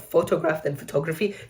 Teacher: photograph then photography, you see the o disappears.